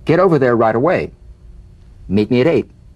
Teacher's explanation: the final T when it's followed by a word beginning with a vowel again it becomes in effect a medial T